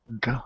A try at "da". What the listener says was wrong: So the bottom of your tongue is now making the sound. You want to make it so that the very tip of your tongue. Very tip. Not the bottom. Da, and it's actually going to touch the little skin right before your teeth. So make sure that it's almost touching your teeth.